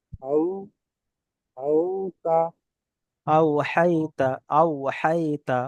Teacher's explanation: এটা ইয়ালিনটা নরম আওয়াজে, ইয়ালিনটা নরম আওয়াজে তাড়াতাড়ি পড়তে হবে